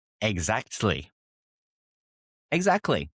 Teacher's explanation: Don't pronounce every T. British English often softens or even drops the T sound. Not always, but it's often something very common.